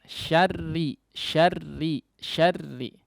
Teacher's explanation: Sifat takrir jangan terlalu banyak syarr, r getarannya itu sifat takrir namanya. Getarannya tersebut jangan terlalu banyak ya.